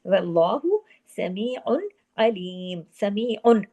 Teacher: वल्लाहु समीउन अलीम, समीउन, आइन 2 पेश उन की तनवीन है, लेकिन आगे आइन होने की वजह से, हरफे हल्की होने की वजह से इजहार हल्की हो रहा है, कोई गुन्ना नहीं हो रहा। समीउन पूरा इजहार हो रहा है, यहाँ पे इदगाम नहीं हो रहा, इजहार हो रहा है।